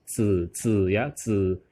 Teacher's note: Baru z, bukan dibaca z ya, tapi dibaca z. Z ini suara lidah ditekuk ke langit-langit mulut.